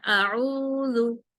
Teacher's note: زال کو نرمی سے پڑھنا ہے اور باریک پڑھنا ہے